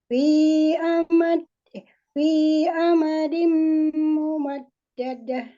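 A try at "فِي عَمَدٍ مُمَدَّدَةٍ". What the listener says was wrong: Gunahnya ditambahkan sedikit lagi ya Bu.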